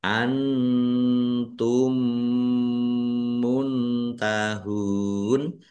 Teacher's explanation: idgham mimi dibaca mendengung ya atau gunah mendengung